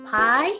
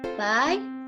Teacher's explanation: the first sound is voiceless the other is voice